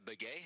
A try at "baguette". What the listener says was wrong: We're gonna throw some T's on the end there for you.